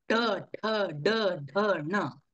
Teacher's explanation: म्हणताना आपली जीभ वाकडी होते वरती वक्राकार होते आणि वरती जो खोलगड भाग आहे त्याला धक्के देते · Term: मूर्धा